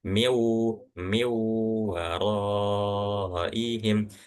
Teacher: Caranya seakan-akan langsung dilewatin aja langsung masuk ke huruf selanjutnya yaitu huruf waw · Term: idgham bi gunnah